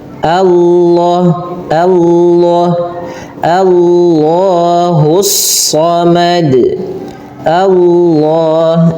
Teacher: lafal Allah memang dibaca tebal tapi huruf sebelumnya sesuai dengan hurufnya. Kalau dia huruf tipis maka dibaca dengan tipis.